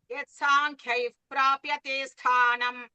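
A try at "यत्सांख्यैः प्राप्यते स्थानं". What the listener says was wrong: You are telling uf or up. It's not clear. Yat sankhyaif prapyate sthanam.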